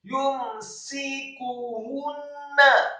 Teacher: Setelah sinnya dibaca tipis kasrah 1 harokat, kemudian kafnya dibaca dhammah tipis 1 harokat, dan nunnya dibaca ditasydidkan dan dhammah 1 harokat.